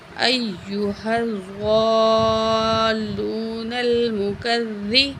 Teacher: زواد کو موٹا کر کے پڑھیں گے